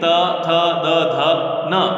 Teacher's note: त थ द ध न ल और दंत्य सकार, इनका उच्चारण स्थान क्या है? दंत है। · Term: तवर्ग